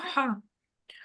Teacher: حلق کے سب سے نیچے والے حصے سے یا ڈیپ حلق سے اس کی آواز نکلتی ہے